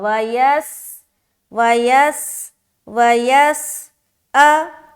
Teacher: سین میں سیٹی کی آواز ظاہر ہوگی